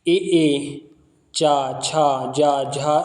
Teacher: ऐसे वर्ण जिनके उच्चारण में जिह्वा तालु को स्पर्श करती है उन्हें तालव्य वर्ण कहते हैं